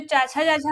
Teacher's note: यह हो जाता है तालु से, तालु से हम बोलते हैं इसको, इसका प्रयोग तालु से होता है, क्योंकि जो चाचा चाचा वाली लाइन है वो हमारी तालु से बोली जाती है।